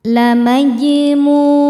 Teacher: Sebab ada huruf qalqalah yaitu jim yang sukunnya sukun asli dan ada di tengah bacaan. Cara bacanya memantul dengan pantulan yang kecil. · Sebab ada wau sukun sebelumnya berharakat dommah. Cara bacanya dipanjangkan dua harakat. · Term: qalqalah sugra, mad thobi'i zohiri